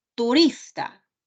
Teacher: Turista, el acento está en la penúltima sílaba.